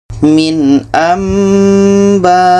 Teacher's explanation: Di sini ada nun mati bertemu ba, ini iqlab. Bunyi nun kita tukar kepada bunyi mim dan kita dengungkan. Contoh min amba.